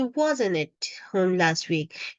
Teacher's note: when I say wasn't I really didn't say t sound strongly because when we speak we don't say it but in informal